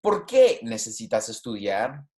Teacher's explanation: you hear my my voice going up and then it goes down for the rest of the sentence